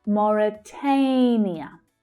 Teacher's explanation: So that stressed syllable there is the third, the /eɪ/ as in 'day' vowel sound.